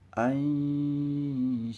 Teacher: Dibaca samar, hampir mirip antara suara n dan ngeh, dan mendekati huruf setelahnya. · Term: ikhfa hakiki